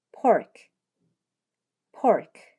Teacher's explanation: 입술을 붙인 상태에서 입술에 힘을 주었다가 터뜨리며 하고 발음 하셔야 해요